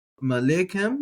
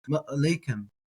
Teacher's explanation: I like to treat that sort of like that guttural stop, like the Okina in Hawaiian.